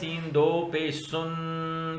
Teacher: نون کی آواز کو ہم نے ناک کے اندر گھما دیا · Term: غنہ